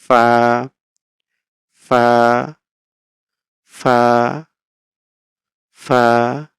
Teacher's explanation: যে ছবিটা দেখে এরকম ভাবে চেষ্টা করবেন যে নিচের ঠোঁটের পেট নিচের ঠোঁটের পেট সামনের উপরের দুই দাঁতের আগার সঙ্গে লাগিয়ে উচ্চারণ হবে